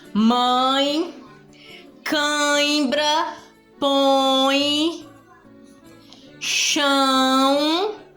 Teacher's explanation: a sua voz quando você vai pronunciar a palavra sai pela boquinha e pelo nariz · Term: os nasais